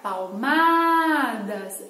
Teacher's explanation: ao pronunciar palmadas, a sílaba mais alongada é a má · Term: sílaba tônica